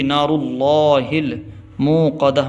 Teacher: جب سانس توڑتے ہیں تو جو گول تا ہوتی ہے وہ ہا بن جاتی ہے